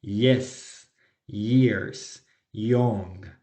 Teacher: cuando la palabra empieza con Y, no va a sonar como Y en español, sino como I.